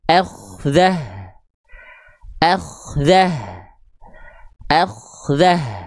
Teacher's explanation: kalau kita stop jadi ha besar sukun, kalau ketika dia lanjut dia dibaca menjadi ta maftuhah, tak biasa saja yang ini ya, dan harokatnya mengikuti harokat beserta nanti kondisi hukum tajwidnya.